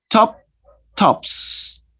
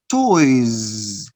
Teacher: You write the letter S, but you don't pronounce S. You pronounce Z.